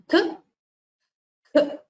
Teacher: You will notice that the sound emanates from the base of the tongue. So it is called jihva means tongue, muliyaha means base. · Half the duration of that sound, when it appears before k and k, which is the first and the second letter of the kavarga, it gets the pronunciation as k, k. So you just exhale through the mouth, and the duration is very short. That happens before k, k and a k. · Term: jihvamuliyaha